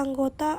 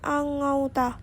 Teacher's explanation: Perubahan ini terjadi pada bunyi vokal tunggal o ke vokal rangkap au, tetapi tetap dalam pengucapan satu bunyi puncak. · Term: diftongisasi